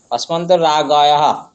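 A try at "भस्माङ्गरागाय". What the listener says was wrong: রাগহ না, ইয়কার দেখুন, ইয়কারের আগে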